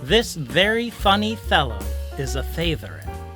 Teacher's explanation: my lip movements may have fooled your brain into thinking I was making F and V sounds instead of soft and hard TH sounds